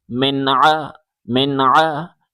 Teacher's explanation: گلے سے زور لگا کے عین پڑھیں